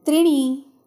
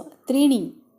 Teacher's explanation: त्रि दीर्घ आणि णी ह्रस्व.